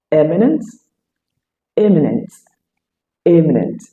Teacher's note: all those words has their stress on the very first syllable